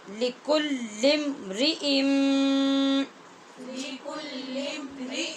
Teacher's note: نون تنوین کے بعد آگے میم ہے شد والا مشدد، اس لیے یہاں پہ غنہ کریں گے ہم